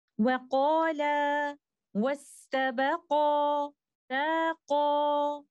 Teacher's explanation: When stopping on the words, the alif indicating a double is then pronounced because there is no longer the meeting of two sakin letters. So there is no need of Nabr since the reason is disappeared.